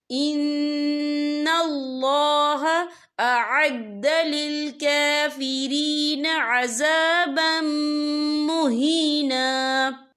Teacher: ان اللہ اعد للکافرین عذابا مہینا، یہ دیکھیے عذابم، با کے پر تنوین ہے، تنوین کے بعد جو ہے میم آ رہا ہے، اور میم جو ہے حروف یرملون میں سے ہے، تو یہاں پر ادغام ہوگا، تو ہم اسے غنّے کے ساتھ پڑھیں گے۔